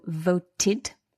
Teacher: this word voted, we've got the dental consonant t